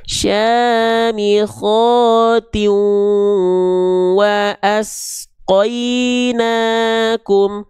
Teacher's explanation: Diidgamkan, dileburkan, dibaca juga dengung selama dua harakat. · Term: idgham bihunah